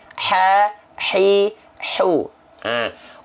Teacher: Ha kecil keluar dari tengah tenggorokan